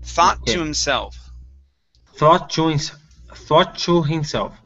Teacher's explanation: we're going to combine these two t sounds so instead of creating two we're going to say one